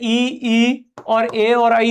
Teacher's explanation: जब जीभ हमारे मुंह के अगले भाग या आगे टच होती है तो वहां से ई और ए और आई ध्वनियां निकलती है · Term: अग्र